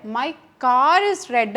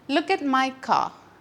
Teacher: Linking R എന്ന് വെച്ചാൽ രണ്ട് വേർഡ്സിനെ ലിങ്ക് ചെയ്തുകൊണ്ട് ആർ എന്ന് പറയുന്ന ലെറ്റർ വരുന്നു, റ് എന്ന് പറയുന്ന സൗണ്ട് നമ്മളവിടെ റിയലൈസ് ചെയ്യുന്നു, പ്രൊനൗൺസ് ചെയ്യുന്നു.